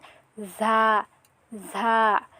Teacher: ঝার মাখরাজটি হবে জিহ্বার আগার সামনের নিচের 2 দাঁতের মাঝখানে লাগিয়ে